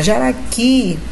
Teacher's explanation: a sílaba tônica está lá na última. Então, é uma oxítona.